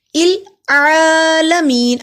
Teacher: نسائل عالمین، سین پہ سٹی کی آواز آئے گی، سا کو لمبا کیا، الف سے پہلے زبر ہے، حروف مد ہے اور اس پہ بڑی مد ہے، بڑی مد کو 3 الف کے برابر لمبا کیا جاتا ہے. العالمین، عین پہ کھڑی زبر 1 الف کے برابر لمبا ہوگا